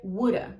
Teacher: pronunciar a wooda wooda com esse som de D mesmo e um americano provavelmente pronunciaria wooda com esse Flap D